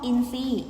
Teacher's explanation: อินทรีย์ทรออกเสียงเป็นซอโซ่นะคะ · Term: อักษรควบไม่แท้